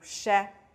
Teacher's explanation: 双唇向前伸，舌前部抬起，与硬腭形成缝隙，气流从口腔的缝隙冲出 ，发出擦音湿的音，声带是不震动的。因此这两个音节，拼上▁i，▁前面读▁sh，▁后面▁sh▁拼上▁i▁读▁sh，▁因此这两个音节▁sh▁和▁sh。西，我们看这两个音节的发音